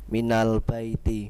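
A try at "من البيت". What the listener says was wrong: Ba-nya jangan ditekan. Ingat baik-baik, ba-nya jangan ditekan, jangan ba. Jangan begitu, ba. Biasa saja.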